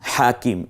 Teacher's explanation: এই হাটা গলায় চাপ দিয়ে উচ্চারিত হবে। কিম এর মধ্যে কারণ হচ্ছে কাফের নিচে জের, ইয়া সাকিন, একালিপ টেনে বলতে হবে।